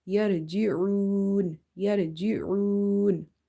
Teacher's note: Ain is from the middle of the throat. Ain is from the halkiya letters, and you have to feel that squeezing sound in your muscles in the neck when you say yarji'un, yarji'un. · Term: throat letter